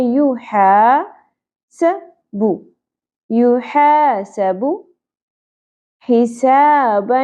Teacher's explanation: ہا الف حرف مدہ زبر کے بعد خالی الف ایک الف کے برابر کھینچنا ہے